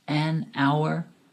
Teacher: The letter H in this word is silent, so it sounds like it starts with a vowel.